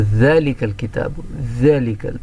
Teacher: دونوں دانتوں، اوپر کے دانتوں اور نیچے کے دانتوں کے درمیان میں سے زبان تھوڑی باہر آئے گی